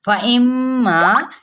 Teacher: یہاں پہ کیا ہے غنہ ہو رہا ہے حمزہ کی زیر کو میم کے ساتھ اور 1 الف مدہ بھی ساتھ میں کریں گے